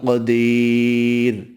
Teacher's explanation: را ساکن سے پہلے یا ساکن ہے، را کو باریک پڑھیں گے